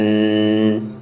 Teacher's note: یہ آواز دیکھ لیں، ان، یہ غنہ ہے۔ غنہ کی آواز ناک میں رک کر نکلتی ہے، یعنی کہ آواز کو تھوڑی دیر ناک میں رکھنا، یہ غنہ کہلاتا ہے۔